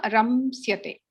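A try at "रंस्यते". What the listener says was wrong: Makaram api bhavati vadati. Makaram na vadatu. Ramsyate.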